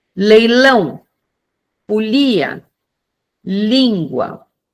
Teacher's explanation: É um som muito semelhante ao L do espanhol, né, lago, Luiz, ou seja, ela é realizada, né, a partir da obstrução total do dorso da língua. Então, o ar necessariamente precisa sair pelas laterais da língua. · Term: lateral alveolar